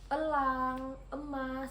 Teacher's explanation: vokal E madia tengah dengan posisi mulut semi tertutup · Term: vokal E madiyah tengah